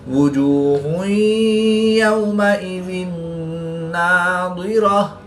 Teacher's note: واو ساکن سے پہلے یا پر زبر ہے تو واو لین اس کو لمبا نہیں کریں گے. دو زیر کی تنوین کے بعد نون حروف یرملون میں سے ہے تو یہاں پر ادغام مع الغنہ ہوگا، یعنی غنہ کر کے پڑھیں گے. · دو پیش کی تنوین کے بعد یا حروف یرملون میں سے ہے تو یہاں پر ادغام مع الغنہ ہوگا، یعنی غنہ کر کے پڑھیں گے